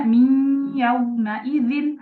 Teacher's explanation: Ghunah itu ee kayak suara yang masuk hidung